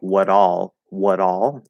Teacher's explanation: you also tried to reduce the er to uh